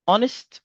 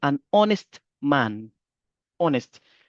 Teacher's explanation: mais vu que la lettre H est une lettre muette, donc vous n'allez pas la prononcer, vous prononcez la euh la voyelle qui vient, donc la lettre O ve dire un honest.